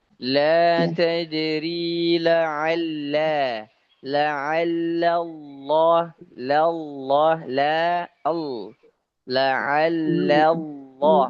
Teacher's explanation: perhatikan lam yang pertama tuh tipis, lam yang kedua baru tebal